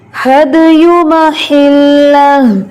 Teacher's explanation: یو کو لمبا نہیں کرنا اور ہا جو ہے اس کو کلیئر کرنا ہے